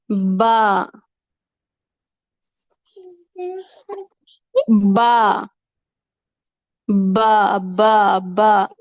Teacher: آپس میں ہونٹوں کا جو گیلا حصہ ہوتا ہے وہ جب آپس میں ملتا ہے تو وہاں سے با ادا ہوتا ہے۔ ہونٹوں کو بند کر کے با نہیں ادا کرنا، با ہونٹوں کی تری سے ادا ہوتا ہے اور اس کو بحری کہتے ہیں۔